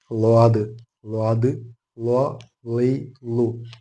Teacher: നാവിന്റെ രണ്ട് അഗ്രഭാഗങ്ങൾ ഏതെങ്കിലും ഒന്ന് നമ്മുടെ മേലെ മുൻപല്ലിന് മേലെ അണപ്പല്ലുകൾക്ക് മുകളിൽ തട്ടിച്ചുകൊണ്ട് വായ നിറയെ ശബ്ദം പുറത്തേക്ക് വരുന്ന രൂപത്തിൽ പറയുന്ന അക്ഷരമാണ് ളാദ്